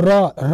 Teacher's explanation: र एक लुंठित वर्ण है लुंठित मतलब र जब बोलते हैं तो जीव हमारा घूम जाता